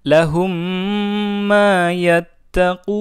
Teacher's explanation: Lahum ma yattaqun. Oke, ada mim sukun bertemu mim, dibaca dengung